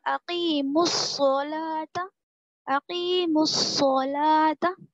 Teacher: اگر حروف شمسی کے شروع میں ہو تو الف اور لام دونوں کو بھی نہیں پڑھیں گے بلکہ بعد والے حرف سے ملا کر پڑھیں گے · الف لام کے بعد والا جو حرف ہے صاد، میم سے ہم اس صاد کو ملا کر پڑھیں گے